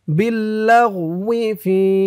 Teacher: ৩ আলিফ টান মধ্যে মুনফাসিল